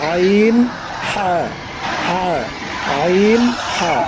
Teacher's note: গলা চিপে, মানে গলার মাঝখান থেকে গলা চিপে উচ্চারণ করতে হবে